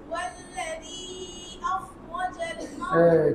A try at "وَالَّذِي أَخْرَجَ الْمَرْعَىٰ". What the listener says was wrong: কি ভুল করছে বলো টান কম দিছে এই অভ্যাস থেকে বেরোতে হবে হ্যাঁ বলো কয় লিফ টান বলো তো এখানে কয় লিফ তিন লিফ চার লিফ কোনো টান আছে কারণ তিন লিফ দিলে তোমাদের প্রতিযোগিতা দিয়ে এক লিফ টিকবে এখন তোমার ছয় লিফ দিবা তাহলে যে সময় প্রতিযোগিতা দিব ওই সময় ইনশাআল্লাহ তিন লিফ টিকবে হ্যাঁ আবার অলরেডি